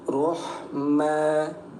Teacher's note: ada tanwin kemudian kita berhenti hukumnya jadi mad iwat. Dibaca dua harakat ya.